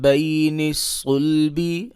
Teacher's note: صاد کو موٹا پڑھیں گے اور صاد کا دوسرا گروپ حروف اسفیریہ والا ہے، لہٰذا اس کو سیٹی کی آواز سے بھی پڑھیں گے